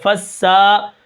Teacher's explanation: سین کے اوپر کھڑا زبر ہے، اس کو ہم ایک الف کے برابر کھینچ کر پڑھیں گے